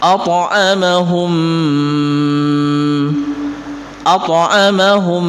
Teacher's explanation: Pantulannya tidak dikeraskan karena ini berada di tengah-tengah kata, tidak berada di akhir ayat.